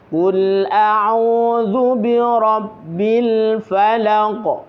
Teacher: Bil, lagi bil, ketika mengucapkan bil, usahakan lidah jangan sampai bergerak agar tidak ada suara pantulan